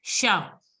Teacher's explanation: But generally in French, the last letter is not to be pronounced. So don't pronounce T. So it has to be pronounced as sha.